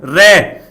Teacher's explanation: प्रकंपित वर्ण रे, जिसका उच्चारण करने में कंपन पैदा हो जाए जीभ में, उसको कहा जाता है रे। और इसी को लुंठित वर्ण भी कहा जाता है, इसी रे को लुंठित वर्ण भी कहा जाता है।